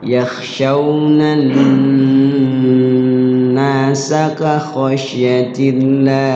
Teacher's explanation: yakhshawnan ditahan ya ada waktu ada jeda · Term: gunnah